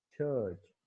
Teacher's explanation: Initial position पे आप इसको छ, उसमें एस्पिरेटेड साउंड है, ये एस्पिरेशन आप ऐड कर रहे हैं। लेकिन जो लास्ट पोजीशन पे जब आ रही है तो उसमें एस्पिरेशन आप ऐड नहीं करे, अब उसको च बोल रहे हो, चर्च।